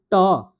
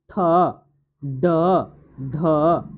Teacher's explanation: जैसे कि देखिए ट, देखिए आपका जीभ जो है ऊपर दांत के आसपास लगता है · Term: मूर्धन्य